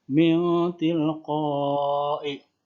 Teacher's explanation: sukunnya berubah menjadi seakan-akan berubah menjadi bunyi ang ya. Min tilqai. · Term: ikhfa kubro